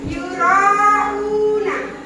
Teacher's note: Ya, dibaca panjang 5 harokat. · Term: mat wajib muttasil